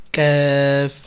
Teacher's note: কাফটা হলো হামসের হরফ, এই জন্য একটু এরকম বাতাস জারি থাকবে